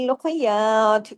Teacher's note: ख को हैवी करना है या को बारीक रखना है त को हैवी भी और कलकला भी करना है